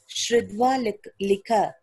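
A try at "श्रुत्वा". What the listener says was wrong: Not Dva. Shrutva Likha.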